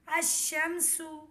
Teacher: لام نہیں پڑھا جائے گا بلکہ الف کو شین سے ملائیں گے۔ تلفظ میں کچھ یوں ہے، حمزہ شین زبر اش، شین میم زبر شم، الشم، سین پیش سو، الشمس۔